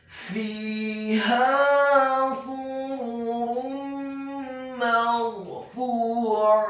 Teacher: huruf ra-nya dibaca sukun, isti'la wa tafkhim, bergetar dan tebal karena sebelum huruf ra yang sukun adalah huruf yang harokatnya adalah fathah. · huruf fa-nya dibaca dhammah 2 harokat karena setelahnya ada huruf waw sukun. Huruf ain-nya ditekankan fathah 1 harokat, dan di akhir ayat huruf ta marbutahnya diubah menjadi huruf ha yang tafkhim yang tebal dan dibaca sukun.